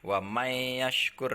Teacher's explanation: Wa may yashkur ya, jadi langsung masuk ke huruf ya-nya. Jadi huruf nunnya tidak dianggap ada ya. Wa may yashkur, nah namanya hukum bacanya adalah idgham.